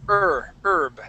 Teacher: this word is herb, and so that H is going to be silent